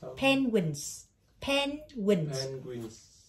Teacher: Tiếng Anh nó sẽ có hai có chữ hai âm tiết, nó nhấn âm đầu tiên